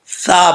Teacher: सा जुबान की नोक ऊपर वाले दांतो के निचला जो हिस्सा है वहां पे थोड़ा सा अंदर की तरफ लगेगी तो क्या पढ़ा जाएगा सा पढ़ा जाएगा सा बगैर सीटी के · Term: सा का मखर